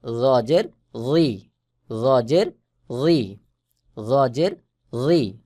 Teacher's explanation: জ এবং জাল এ দুটাও একই রকম। যেমন জর আওয়াজ মোটা হয়ে গোল মতো হয়ে উচ্চারণ হবে